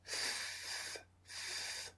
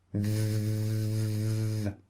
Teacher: The first one is unvoiced. Put your hand over your throat. F, f, and the second one is voiced.